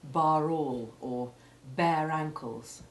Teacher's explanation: Where it is preceded by a vowel, including Y when used as a vowel, as in ta or ba, the final E is simply the silent E that changes the preceding vowel, turning bar, for example, into bear, and the R is so weak as to be almost silent too. Unless it is followed by a sounded vowel, as in bar all or bare ankles.